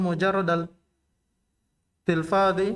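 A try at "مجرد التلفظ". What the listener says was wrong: Tidak ada tilfad, tidak ada alif sebelum setelah fa. Tidak ada alif setelah fa. Tidak ada alif sebelum dha. Tafa'ala fil madhi.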